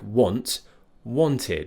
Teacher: ID which is a combination of I like in sit or it and D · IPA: /ɪd/